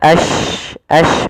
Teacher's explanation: Tafasyi adalah sifat huruf yang dimana menyebarnya suara shin di dalam mulut.